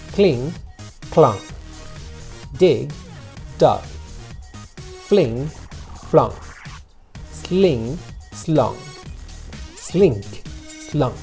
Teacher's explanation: Esa U realmente no es un sonido de una U pura como lo es para nosotros en castellano. Es más bien un sonido entre una O y una A. Es un sonido vocálico de esos que hay en inglés que es nuevo para nosotros en castellano.